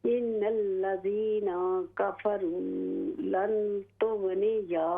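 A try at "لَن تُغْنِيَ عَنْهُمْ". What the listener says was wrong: अन्हुम, या को लंबा न करें।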